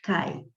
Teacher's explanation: Por exemplo, na palavra cai, mas você tem 2 sons vocálicos na mesma sílaba, então você tem um ditongo